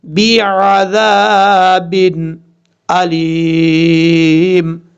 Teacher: آگے ذال ہے، ذال کو بغیر سیٹی کے ساتھ پڑھا جائے گا. ذال کے آگے الف ہے، ایک الف کی مقدار لمبا کریں گے.